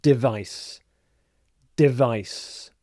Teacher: the stress is on the second syllable, vice.